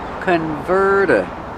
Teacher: Use a fast D. The T changes to a fast D.